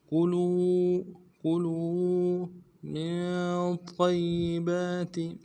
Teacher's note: میم کو نون ساکن کے ساتھ ملانا ہے نون ساکن میں غنہ کریں گے